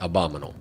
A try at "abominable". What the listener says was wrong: No, there's another b in there. Abominable. Yeah.